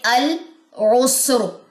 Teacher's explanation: را کی زیر ڈراپ ہو جائے گی وقف کی صورت میں، را کے اوپر کہنے کے اس طرح جزم کا سیمبل آ جائے گا، بالکل ایسے۔